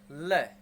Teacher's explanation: ऊपर तालू से जीभ हमारी टकराती है और हवा दोनों बगल से निकल जाती है, वो हमारा पार्श्विक व्यंजन है।